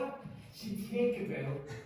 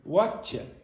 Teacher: usually English speakers, whatever dialect, will pronounce what do you, like what you.